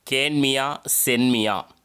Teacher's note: இது குற்றிய லிகரம். மியா எனும் அசை சொல்லில் உள்ள இகரம் தன் மாத்திரையில் குறைந்து ஒலிக்கும்